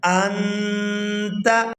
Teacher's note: نون ساکن پر ہم اخفا کریں گے، آواز کو ناک میں چھپائیں گے اور اس کی مقدار جو ہے وہ 1 سیکنڈ کے برابر ہے